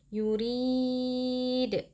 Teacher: Ra terqiq atau tipis karena ra-nya berharokat kasrah.